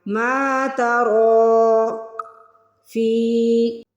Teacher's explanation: زیر کے بعد یا ساکن آ رہی ہے تو ہمیں فی کو کھینچ کے ادا کرنا ہے